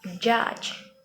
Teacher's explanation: kita menghubungkan pemblokiran aliran udara singkat seperti pada plosive, kemudian diikuti oleh pelepasan menjadi suara mirip frikatif